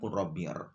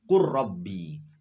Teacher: lam bertemu dengan ro. Maka ketika dibaca ya harus idgham, karena itu adalah bacaan idgham mutajannisen.